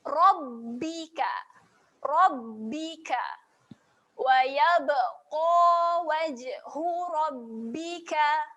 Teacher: Adanya tanda sabdu di atas huruf ba, berhenti pada makhraj huruf ba, rapatkan bibir.